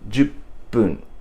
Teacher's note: ju and fun becomes pun, jupun. And with a small tsu put in between, it becomes jupun.